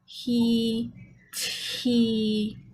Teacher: So what you're aiming for is he, because without the intrusive H, what would tend to happen is the child would then go back to the old inaccurate program and you would get a glottal stop for the T. So the intrusive H is meant to keep the glottis open.